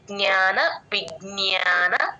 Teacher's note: జ్ఞ ఎప్పుడు వచ్చినా సరే జి ఎన్ వై ఏ ఆ లాస్ట్ లో ఎండింగ్ లో య వినపడేటట్టు చెప్పాలి